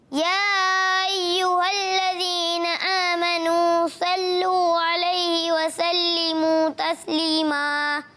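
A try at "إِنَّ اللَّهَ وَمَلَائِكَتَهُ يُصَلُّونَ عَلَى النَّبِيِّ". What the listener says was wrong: اچھی کوشش کی, مگر وملائکتہ مد کو آپ نے کھینچنا ہے. یصلون صاد, اس کو پر کرنا ہے. کیا کرنا ہے؟ پر. موٹا.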